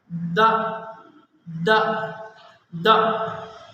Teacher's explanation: باریک فرق یہ ہے کہ جب ہم پہلا حرف دا ادا کرتے ہیں، یہ اوپر والے دانت ہیں، یہ زبان کی نوک ہے۔ تو جب ہم پہلا حرف دا ادا کرتے ہیں تو یہ زبان کی نوک دانتوں کے درمیان میں آ کر ٹچ کرتی ہے۔ یہ دانتوں کا درمیان ہے، یہاں آ کر لگتی ہے۔